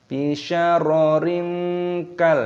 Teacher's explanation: kasroh tanwin bertemu dengan kaf, ini hukumnya dibaca ikhfa. Cara membacanya yaitu dengan cara disamarkan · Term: ikhfa bersamar